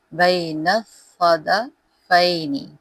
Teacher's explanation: نون کو صاد کے ساتھ ملائیں گے، صاد پہ تشدید ہے